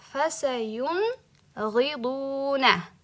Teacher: Ikkinchi qiladigan ishimiz g'unnasiz o'qish. G'unna qilish mumkin emas. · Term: izhor